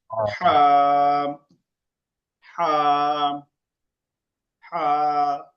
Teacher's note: গলা চেপে ভিতরে নিয়ে হা, হা, হা।